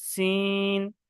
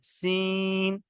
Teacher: এটা হচ্ছে কি সিন, তিন আলিফ টান দিয়ে বলতে হবে সিন।